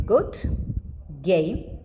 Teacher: The allophonic variants of G are: it is partially devoiced when it begins a word